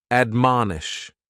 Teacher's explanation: admonish has 3 syllables, and the stress is on that second syllable, mon